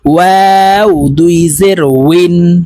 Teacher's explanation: ওয়াও হরফ ঠোঁট গোল করে উচ্চারণ করতে হবে।